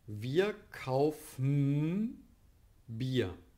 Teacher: Hier richtet sich dann das danach, was für ein Folgelaut kommt. Also das B von Bier hier im Beispiel ist dafür verantwortlich, dass wir M realisieren.